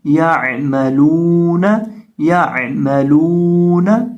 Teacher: لام کو ایک الف کے برابر ہم نے لمبا کر کے یہاں پڑھنا